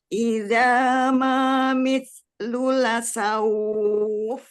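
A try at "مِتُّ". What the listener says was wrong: Mitu bukan mitlu.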